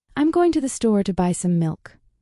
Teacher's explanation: Notice which words are stressed: going, store, buy, milk. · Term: rhythm